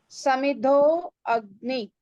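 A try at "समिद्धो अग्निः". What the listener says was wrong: You're not sounding the visarga. Why you are swallowing the visarga? Read Samiddha Agnihi. Agnihi.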